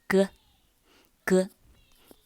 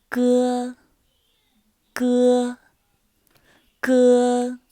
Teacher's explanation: It's lighter than English G, and it should be as light as K in skirt.